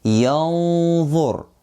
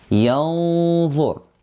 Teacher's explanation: dha here comes after noon sakinah, so it's hiding and ghunnah is heavy